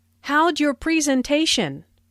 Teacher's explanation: Notice the contraction for how did sounds like howj and your sounds like your.